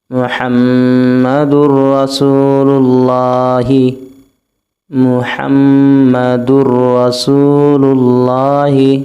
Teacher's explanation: یہ نون ساکن جو آ رہا ہے اس کو ہم نہیں پڑھیں گے، میم کو ڈائریکٹ را سے ملائیں گے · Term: ادغام بلا غنہ